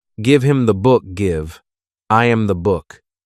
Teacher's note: In fast speech, little words like him, her, and his often lose their h sound. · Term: the disappearing h